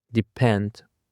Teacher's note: Depend consists of two syllables and the stress is on the second syllable.